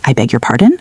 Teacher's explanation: Use a rising intonation and say, I beg your pardon?